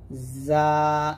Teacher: আর যা উচ্চারণ করার সময় জিহ্বার আগা সামনে নিচে দুই দাঁতে মাঝে লাগবে, যা, এরকম। তো জিম উচ্চারণ করার সময় দাঁতের সাথে কোনো সম্পর্ক নেই, আর যাটা অবশ্যই নিচ দাঁতে লাগাতে হবে।